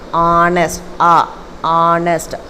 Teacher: The H is silent, so the first sound of the adjective is an O, a vowel sound.